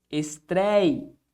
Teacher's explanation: Qual que é a sílaba tônica de estreia? Bom, tá bem aqui, ó. É a penúltima sílaba. Então, estou diante de uma paroxítona.